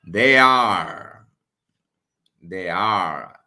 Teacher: They is unstressed. Are is stressed here. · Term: Trochee